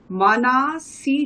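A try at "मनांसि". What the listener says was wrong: মানামসি, ওখানে অনুস্বার আছে। মনস শব্দের প্রথমা আর দ্বিতীয়ার বহু বচনে মনামসি রূপ হয়।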